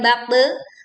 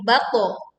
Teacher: bukan baqte, bukan miring teman-teman, tetapi baqo karena huruf to adalah huruf isti'ala, huruf tebal